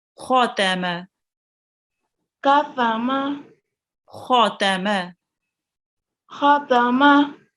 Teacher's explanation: Remember to round the kho because it's a thick letter.